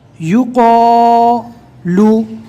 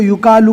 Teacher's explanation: قو اس کو پور بھی پڑھنا ہے اور ایک الف کے برابر کھینچ کر بھی پڑھنا ہے۔ بہت سے لوگ اس کو یوکالو پڑھتے ہیں۔